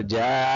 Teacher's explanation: یہ بڑا مد ہے یعنی کہ 4 الف کے برابر کا مد ہے. جیم الف مد زبر جا.